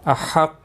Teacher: قاف مستعلیہ ہے، پر پڑھا جائے گا